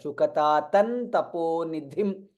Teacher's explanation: Anuswara followed by ta, hence there will be a nakara, you will hear nakara.